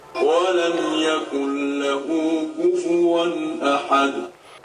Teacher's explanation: یہاں پر بھی آیت پر جب رکیں گے تو یہ تنوین کی جگہ یہ جزم ہو جائے گا، دال ساکن ہو جائے گا اور اسے قلقلے کے ساتھ پڑھا جائے گا